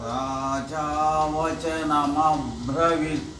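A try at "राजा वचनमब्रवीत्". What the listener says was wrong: వి దీర్ఘం ఉంది, ఇంకోసారి.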